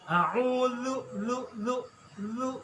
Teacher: Di ujung lidah. A'udzu torful lisan ya, ujung lidah nempel kena gigi atas.